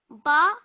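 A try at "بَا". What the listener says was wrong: Ba, well done. Don't pronounce it for too long because we only want to pronounce it for 2 seconds, okay?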